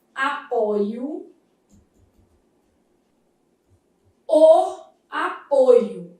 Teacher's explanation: Nesse substantivo, a gente vai ter uma vogal o fechada.